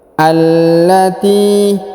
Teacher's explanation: Allati, huruf a ya, langsung sambung ke alif lam atau ke lam yang berharokat tasdid ya, ditahan dan ditekan. Allati, huruf T dipanjangkan 2 harokat karena di depannya terdapat ya sukun